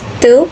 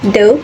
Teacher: Te is voiceless and de is voiced. They are alveolar plosives made with the tongue touching the alveolar ridge.